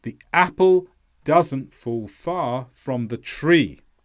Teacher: now you notice here that fall is perhaps less stressed than far and that's simply to keep the Rhythm in the sentence but